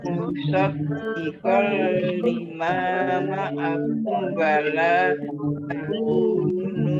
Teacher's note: Musaddiqal lima, mim fathah alif, mat tobi'i, panjang 2 harokat. Mim sukun bertemu dengan huruf wawu, idhar safawi, dibaca jelas.